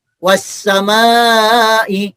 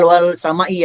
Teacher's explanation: Jangan dibaca wal samai, tapi langsung dibaca wash. Bunyi huruf lamnya hilang, masuk ke huruf sesudah lamnya. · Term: idgham syamsiah